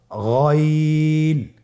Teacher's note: হারাফটি উচ্চারিত হয় কন্ঠনালীর শেষ ভাগ হতে